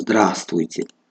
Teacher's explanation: Чихеле ки мебинем здравствуйте навишта шудааст ва мо мегӯем здравствуйте. Инҷо мо ҳарфи в-ро талаффуз намекунем